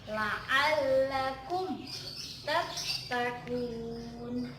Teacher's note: Nah, jadi huruf mim bertemu dengan huruf ta. Ya, yang dibaca jelas. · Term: idhar